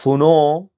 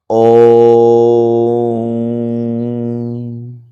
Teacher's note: सुनो, तो सु और नो बोलने में जो है सो, ओकार बोलने में जो है सो 3 मात्रा का समय लगा। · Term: प्लुत स्वर